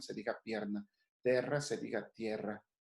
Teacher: La E tónica pierde o diptonga en IE.